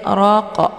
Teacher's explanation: Ini ra harokatnya fathah, jadi ra-nya dibaca tafkhim, ya hukum bacaannya tebal.